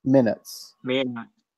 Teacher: The I is more open, and the U as well. The U is more open. · The I is shorter. You're drawing the I out, and then it sounds Mexican